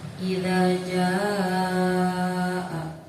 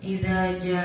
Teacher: Pengertiannya apabila ada mad bertemu dengan hamzah dalam satu kalimat, maka cara bacanya panjang. Panjangnya 3 alif atau 6 harokat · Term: mad wajib mutasil